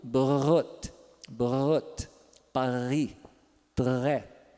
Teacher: E tem agora o ponto uvular, que é o 10, que é também o dorso da língua se aproximando da úvula e fazendo vibrar, que é aquele som do gargarejo